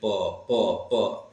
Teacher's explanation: ये जो दोनों ओठ होते हैं जब इनका उच्चारण करते हैं तो सांस का अवरोध करते हैं यानी सांस को स्पष्ट रूप से बाहर नहीं आने देते हैं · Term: ओष्ठ व्यंजन